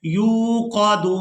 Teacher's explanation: या वाव पेश यू, यहाँ या को वाव मद्दा के साथ मिलाते हुए खींच कर अदा करेंगे